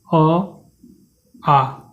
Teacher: कंठ से उच्चारित आपके कौन होंगे अ आ स्वर उच्चारित होंगे